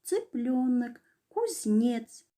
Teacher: звук Ц, согласный, глухой, может быть только твердым Ц, непарный, например, цыпленок, кузнец.